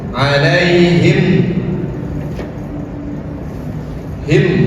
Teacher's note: Tetapi cara membacanya adalah izhar zahir jelas. Mimnya jelas dibaca dan tidak ditahan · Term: izhar syafawi